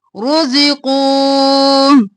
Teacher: قو قاف موٹا اور واو کو ایک الف کے برابر کھینچیں گے